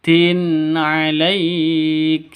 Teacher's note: Nah, izhar halki atau izhar hakiki ya, izhar asli seperti itu. Tanwin bertemu dengan ain, jelas terang, tidak boleh dengung, tidak boleh disentak, tidak boleh dipanjangkan.